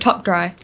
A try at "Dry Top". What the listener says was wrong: Dry Top. It's not You've been saying Top Dry for like the past year, and I've just held my tongue.